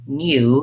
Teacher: they would put this extra gliding y sound in